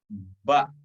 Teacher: Tadi huruf alif sudah, sekarang kita masuk ke huruf ba. Huruf ba bertemunya dua bibir atau nempel, kemudian agak ditekan sedikit, dibuka,